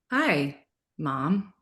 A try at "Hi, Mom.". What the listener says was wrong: Don't make that hi, make it short. Hi. 2 words.